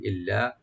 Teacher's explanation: লামটাকে open করে একালিফ টানবেন, ডাবল করে পড়বেন।